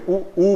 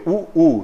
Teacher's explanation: ऊ बोलोगे, ऊ, तो आपके ओठ गोल हो जाते हैं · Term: ओष्ठ स्वर